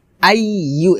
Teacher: জিহ্বার মধ্যখান উপরে তালুর সঙ্গে লাগিয়ে ইয়া পেশ ইউ উচ্চারণ করতে হবে